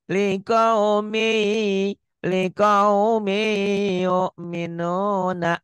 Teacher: ditahan ya karena idgham bigunnah. Ada dengungnya, ada gunahnya, ada panjangnya.